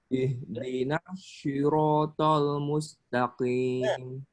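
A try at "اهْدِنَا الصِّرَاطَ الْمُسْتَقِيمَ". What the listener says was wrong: Hati-hati di shot ya. Shot makhraj tempat keluarnya bukan di bibir ya. Ihdinas siro. Bukan ihdinas swi. Nah, jadi kayak istilah bersiul. Nah, itu ya kalau suara sih memang hampir mirip sih. Cuman kalau persis seperti orang bersiul, nah itu kurang apa. Shot ini kayak sin, cuman lidah belakang dia naik. So.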